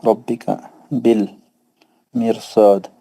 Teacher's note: را ساکن تو موٹا پڑھیں گے کیونکہ را ساکن کے بعد صاد آ رہا ہے حرف مستعلیہ میں سے